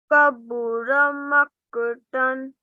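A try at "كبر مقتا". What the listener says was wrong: Maqtan. Okay, qaf has a thick sound. This qaf has thick. The first kaf has a thin sound. Kabura maqtan.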